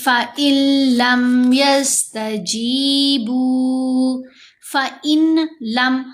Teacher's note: नून साकिन के बाद लाम मुशद्दद है तो यहां हमने इदगाम करना है